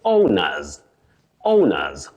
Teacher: When you say owners, that is the second word, O-W-N-E-R-S. That plural S in the second word takes what we call the voiced sound Z.